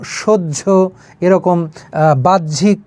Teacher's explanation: হয় জ ফলা, অর্থাৎ হ এবং অন্তস্থ জ, কিন্তু উচ্চারণের সময় সে কিন্তু এই হ এবং জ উচ্চারিত হবে না। হয়ের সঙ্গে জ ফলা থাকলে উচ্চারণটা একটু অন্যরকম হয়ে যায়, উচ্চারণ হবে জ এবং ঝ, জ এবং ঝ উচ্চারিত হয়ে যাবে।